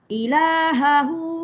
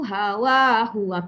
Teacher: Ilahahu hawahu, kedua-dua hu tu sama maksud, tetapi hu yang pertama dibaca dua harakat dipanggil mad silah qasirah, tapi hu yang kedua dibaca pendek